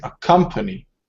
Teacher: the second syllable is accented